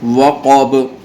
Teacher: غائن کو پر پڑھیں گے، غو، ذال کو نرمی سے ادا کریں گے، قاف بھی پر پڑھا جائے گا، موٹا کر کے پڑھا جائے گا۔ یہاں قاف کو موٹا کر کے پڑھیں گے اور با کے اوپر قلقلہ ہوگا